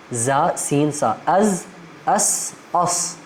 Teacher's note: ان کا مخرج ہے آپ کی زبان کی نوک آپ کے نیچے والے دانتوں کے کناروں کے ساتھ جب لگتے ہیں اس سے یہ حروف ادا ہوتے ہیں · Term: زا سین صاد